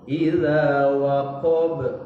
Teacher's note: ba terakhir itu adalah juga harfun qalqalah, huruf qalqalah yang harus dibaca mantul